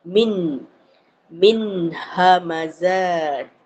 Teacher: Itu izhar halqi. Ha bunyi nun tu nyata.